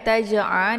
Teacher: tersebut sukun di pertengahan kalimat ini dinamakan dengan Qalqalah sugro jadi cara bacanya itu dengan pantulan yang ringan ya tidak boleh kuat